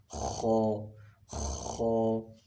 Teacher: خا کا مخرج ہے ادنی حلق